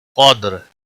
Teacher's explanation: قاف کو موٹا پڑھیں گے، دال پر قلقلہ ہوگا · قدر، قاف کو موٹا پڑھیں گے، دال ساکن پر قلقلہ ہوگا، را وقف کی صورت میں ساکن ہوگا اور موٹا بھی پڑھا جائے گا